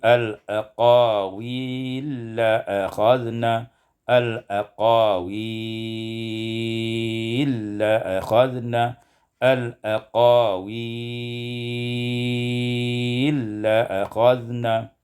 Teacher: Ibda idghamul lam fil lam, diidghamkan lam pada lam